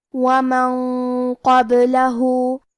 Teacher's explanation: کلمت قبلہ میں حرف القاف کی ادائیگی زبان کے جڑ اور تالو کے نرم حصے سے ہے اور ہمیں یہ حرف کو موٹی آواز میں پڑھنا ہے · قاف حروف الاخفاء میں سے ہے اور اخفاء کا معنی ہے چھپا دینا، لہذا ہم یہ نون کو چھپاتے ہوئے اور غنہ کے ساتھ یہ حکم کو ادا کریں گے. کیونکہ قاف حروف تفخیم میں سے بھی ہے اور غنہ اپنے اگلے والے حرف کا حکم لیتا ہے تفخیم میں اور ترقیق میں، لہذا ہمیں یہ غنہ کو بھی بھاری آواز میں ادا کرنا ہے.